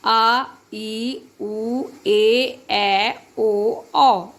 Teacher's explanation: जब इनको प्रोनाउंस किया जा रहा है तो इनको बोलने में ह्रस्व से दुगना समय लग रहा है। जैसे अ में कितना कम समय लग रहा है, आ हो गया डबल, है ना। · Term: दीर्घ स्वर